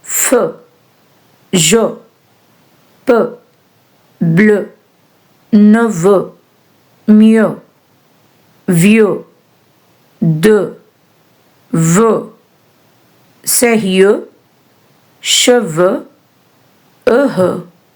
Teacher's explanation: this closed EU sound ends on the vowel. So there is nothing at the end to stop the sound.